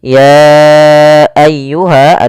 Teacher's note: kita sebut dengan bacaan mad jaiz munfasil yang kita panjangkan sepanjang empat harakat